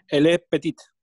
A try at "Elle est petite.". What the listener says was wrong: Exacto, très bien.